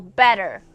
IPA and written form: bɛtər (better)